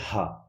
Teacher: ہا کا مخرج شروع حلق، شروع حلق جہاں پہ یہ ہڈی ہوتی ہے سینے کے پاس، یہاں سے لفظ ہا ادا ہوتا ہے۔